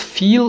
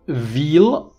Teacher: Interestingly, both sounds have the same place of articulation. The difference between the two is not in the manner of articulation, because they are both fricatives. The difference is in voicing.